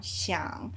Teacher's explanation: the word 想 is a third tone word on its own, so that your voice is supposed to go down